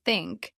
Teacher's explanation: made by lightly placing your tongue between your teeth and blowing air out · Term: thought sound